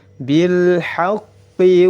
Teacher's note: lam sukun bertemu dengan ha dihukumi lam qamariyah. Izhar dibaca jelas.